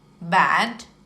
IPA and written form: bæd (bad)